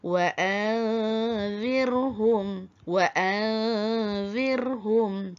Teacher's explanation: Contoh dekat sini huruf zal yang ditemui, maka hendaklah kita menyembunyikan hukum nun mati itu ke dalam zal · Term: ikhfa hakiki